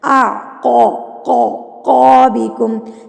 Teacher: ये 2 नुक्तों वाला क़ाफ है, इसको आपने पाउट करके पढ़ना है, मुंह को थोड़ा सा गुलाई की तरफ लेके जाना है, गोल नहीं करना।